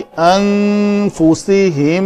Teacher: अनफुसहुम में नून के बाद फा है तो इख्फा होगा।